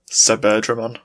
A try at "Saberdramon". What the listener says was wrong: Suberdramon? Isn't it Saberdramon? Sa. Saber. It's Saberdramon. It kind of makes sense that it would be Suberdramon, but it looks like it's spelled Saber.